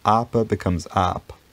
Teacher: central vowel like uh have becomes becomes arpa and then eventually this central vowel is worn away if it appears at the ends of words